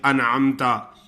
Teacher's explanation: نون ساکن، اور یہ ساروں کا حکم ایسا ہے کہ نون ساکن تنوین کے آگے جو حرف آتا ہے اس کے بارے میں بات ہو رہی ہے کہ نون ساکن اور تنوین کے بعد اگر 6 حروف ہلکی آ جائیں تو نون کو زہر کر کے بلا غنہ یعنی بغیر غنہ کے پڑھا جاتا ہے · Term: اظہار